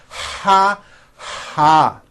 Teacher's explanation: now add the vowel ah ha do you hear that air sound